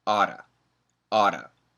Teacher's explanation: ought to and we put the T's together ought to but if we say it fast we get that flap T sound and it sounds like Otto